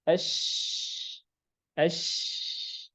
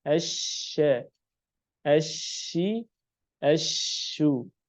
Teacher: Tafasyi yaitu udara yang mengalir atau yang menyebar, bukan mengalir tapi menyebar. Untuk huruf shin saja.